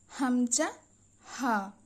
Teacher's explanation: হামজা হা এই দুটি কন্ঠনালীর শুরু থেকে উচ্চারিত হয়